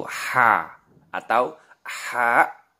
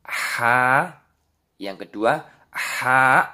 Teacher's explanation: huruf ha itu tempat keluarnya dari tengah tenggorokan